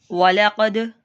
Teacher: दाल पे कलकला करेंगे और क़ाफ को पुर मोटा